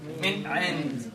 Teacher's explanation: You do the least amount of nasalization, right? You do the least amount of ghunna. You make it very clear, as is, nothing fancy, nothing special around it. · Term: al-idhar